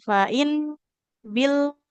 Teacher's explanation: huruf nun sukun dan lam sukunnya jangan memantul ya